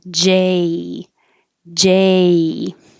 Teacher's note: for j the vowel a has to start low and then rise so you're making the j and then come down j j